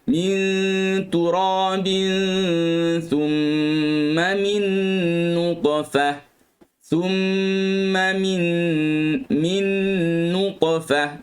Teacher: Qalqalah tu dia ikut makhraj ta, tapi dalam keadaan yang kita kata qalqalah sughra ni taklah kuat sangat bunyi dia.